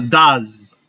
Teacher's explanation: La E no suena y la S es una Z.